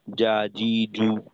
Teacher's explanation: বাকি আমাদের সমস্যা হয়ে গিয়ে দেখা যায় যে সমস্ত হরফে বাতাস বন্ধ থাকার কথা, অর্থাৎ ঝাড়ের হরফ, তো ওইখানে দেখা যায় অনেক হরফের ক্ষেত্রে আমরা বাতাস বের করে ফেলি। যেমন ধরেন অনেকে দেখা যায় জিমের উচ্চারণে যা, জি, জু, তো এইটা উচ্চারণের সময় বাতাস বের হয়ে যায়